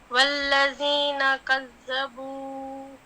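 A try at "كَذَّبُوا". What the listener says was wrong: نہیں بہت زیادہ کذبوا ایسے نہیں، کذبوا بس، کذبوا.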